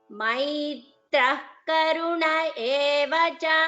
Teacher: visarga followed by ka, so jihva muliya, you chant it as maitra karuna, you don't chant it as maitraha karuna